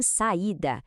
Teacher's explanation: em saída, o A e o I são fortes, então eles se separam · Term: iato